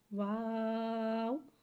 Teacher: واو ایک الف یعنی 3 مقدار کھینچ کے پڑھتے ہیں۔ واو حرف شفویہ ہے، واو دونوں ہونٹوں کی گولائی سے ادا ہوتا ہے